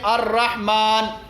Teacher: لام بھی ہے اور را بھی ہے، لام کا را میں ادغام کیا گیا ہے